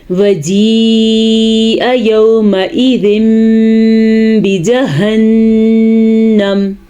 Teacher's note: یہاں پہ کھڑی زیر کے ساتھ مد ہو رہی ہے, 5 الف کے برابر یہ مد ہوگی اور یہ اقلاب کا قاعدہ ہو رہا ہے. · جہنم میں نون کے اوپر غنے کو ضرور ادا کریں گے